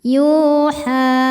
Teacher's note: Cara baca huruf ya panjang dua harakat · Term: mad thobi'i zohiri